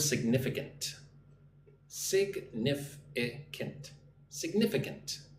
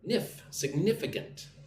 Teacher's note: Put the emphasis on the second syllable.